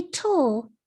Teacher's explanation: the second syllable of turtle say tull real slow with me the vowel sound is actually a schwa you hear it between the consonant t and the l